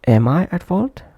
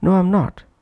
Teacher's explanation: First am is full-length form, that's why pronounced prominently.